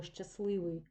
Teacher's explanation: звук т не чуємо і букву т теж не пишемо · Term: спрощення в групах приголосних